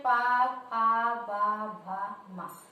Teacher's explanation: तो जब हम कहते हैं पा, फा, तो हमारे दोनों होठ जो हैं वो हम जब पा का उच्चारण करते हैं तो हमारे दोनों होठ आपस में स्पर्श करते हैं। तो होठों की स्पर्श की वजह से इसको कहा गया है ओष्ठ वर्ण, क्योंकि यह इसका उच्चारण हमारे होठों से होता है